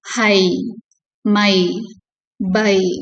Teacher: இந்த டிஃப்தாங் ஏ begins with a low front vowel A and glides to a high front vowel E.